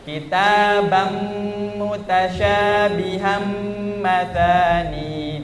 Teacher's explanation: Kitabam, bukan lagi kitaban, tapi kita langsung masukkan ke huruf selanjutnya. Kitabam terus ditekan, itu maksudnya gunnah. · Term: idgham